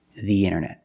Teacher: Pronounce the with a long E, the internet.